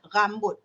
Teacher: Ya, rambut, kuat sangat. Rin dia kuat sebab dia menggunakan uvula, anak tekak.